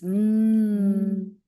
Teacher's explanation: the M is voiced, it hums